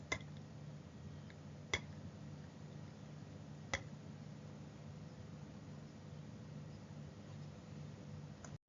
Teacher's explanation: In Malay, it's similar, but we say it more softly. We make the sound with the tongue behind the teeth here. So in Malay, the tongue should be closer to the teeth than in English.